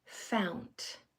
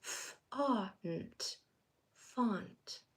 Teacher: Don't let it form that sound ow. Just let your jaw drop and put that ah sound in that space instead. · change the ow sound, that diphthong ow, to an ah. So change the ow in fount to an ah.